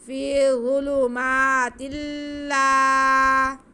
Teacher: تا کے نیچے دو زیر کی تنوین اور اس کے بعد لام پہ شد. ادغام کا قاعدہ ادغام بلا غنہ. فی ظلمات اللہ، الف سے پہلے زبر اس لیے یہ الف مدہ ہے، اس کو کھینچیں گے.